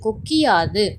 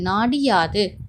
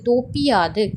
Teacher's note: குற்றியலிகர சொற்களைத் தொடர்ந்து யகரத்தை முதல் எழுத்தாக கொண்ட சொற்கள் வரும்போது குற்றியலிகரத்தில் உள்ள உகரம் இகரமாக மாறும். அந்த இகரம் தனக்குரிய ஒரு மாத்திரை அளவிலிருந்து அரை மாத்திரை அளவாக குறைந்து ஒலிக்கும். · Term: குற்றியலிகரம்